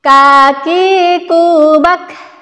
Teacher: huruf Kaf ini memiliki sifat Hames jadi cara pengucapannya ketika dia sukun itu ada nafas yang keluar